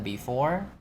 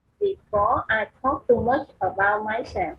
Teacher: Before nó nhấn vần 2. Nhấn vần cuối á, thì khi mà vào câu em sẽ sử dụng dấu nhấn đó.